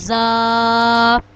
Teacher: زا، جب ہماری زبان کی نوک اوپر اور نیچے کے اگلے دونوں دانتوں کے درمیان آ جائے گی تو زا ادا ہوگا. زا کو ہم ایک الف کے برابر لمبا کرتے ہیں · جب ہماری زبان کی نوک اوپر اور نیچے کے اگلے دونوں دانتوں کے درمیان آ جائے گی تو زا ادا ہوگا. زا کو ہم ایک الف کے برابر لمبا کرتے ہیں زا.